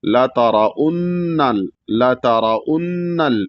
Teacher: تا بھی ظاہر ہو، را بھی موٹا ہو، اور نون پہ غنہ بھی ہو، نون کو لام میں ملایا بھی جائے گا.